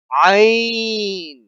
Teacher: عین بھی حلق سے نکلے گا